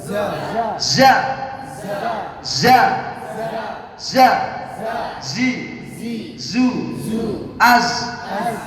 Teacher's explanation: Za ini kalau Indonesia ZA tulisannya ya. Ujung lidah menghadap dan mendekat di antara gigi seri atas dan bawah.